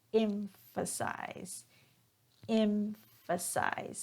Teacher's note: notice that I'm stressing on that first syllable